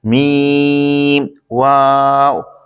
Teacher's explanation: میم دونوں ہونٹوں کے خشک حصے سے ادا ہوتا ہے، واو دونوں ہونٹوں کی گولائی سے ادا ہوتا ہے